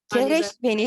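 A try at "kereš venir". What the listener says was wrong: Kereş venir. It's not keres. If it was second person, it would be keres venir, but it's second person plural, so it's kereş venir.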